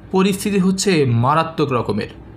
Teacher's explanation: এই যে মারাত্মক শব্দটি, এটি এই বাক্যে একটু উচ্চগ্রামে অবস্থান করছিল ধ্বনির ক্ষেত্রে